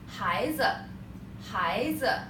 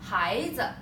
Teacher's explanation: 孩 二 声 子 轻 声 make it short